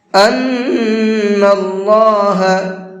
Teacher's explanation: نون کے اوپر تشدید ہے تو یہاں پر غنہ کریں گے